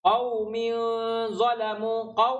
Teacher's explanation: waw sukun didahului fathah, huruf lin, tak ada bacaan panjang, hanya ada bacaan lembut.